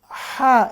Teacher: Ya, di tenggorokan tengah dia. Jangan lupa sifatnya tipis dan napas berhembus.